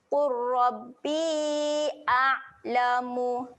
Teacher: Huruf ain ketika mati sifatnya tahan. Okey, tahan bunyi ain mati dekat tengah kerongkong. Qurrabbi a'lamu.